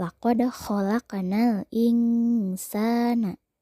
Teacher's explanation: terjadi yaitu apabila nun mati bertemu dengan salah satu huruf ikhfa cara membacanya bunyi n berubah menjadi Eng · Nun sukun bertemu sa, maka dibacanya harus samar, bunyi n berubah menjadi eng.